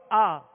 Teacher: آواز اور منہ کھل گئی اور کھینچا بھی نہیں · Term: زبر